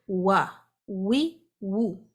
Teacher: اس کے لیے ہمیں کیا کرنا ہے، اپنے ہونٹوں کو مکمل راؤنڈ کرنا ہے. ہونٹوں کو آگے کی جانب لے جا کے آپ وو کی آواز نکالیں گے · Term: الواو غیر مدیہ